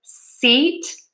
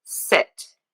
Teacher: Really, the only thing I'm doing for that vowel is I am relaxing my cheeks. Tense for e, relaxed for i.